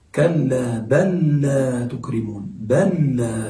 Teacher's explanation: يعني النطق بلام واحدة مشددة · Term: الإدغام